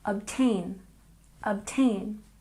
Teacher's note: And obtain, we stress the second syllable.